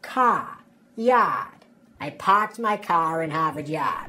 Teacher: the a sound in words like car and yard shifts to ah